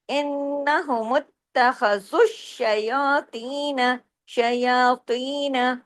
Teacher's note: زال جو ہے وہ شین میں جڑے گا